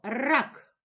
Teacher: який ми чуємо перший звук р який він приголосний твердий позначаємо однією рисочкою ра А голосний позначаємо кружечком рак к приголосний